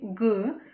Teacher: коли ми говоримо задньоязикові Ґ язик загортається назад